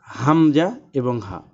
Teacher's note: এক নাম্বার মাখরাজ হলকের শুরু হইতে উচ্চারিত হয় অর্থাৎ হামজা এবং হা অর্থাৎ কণ্ঠনালীর শুরু থেকে উচ্চারিত হয় হামজাহ এবং হা দুই নাম্বার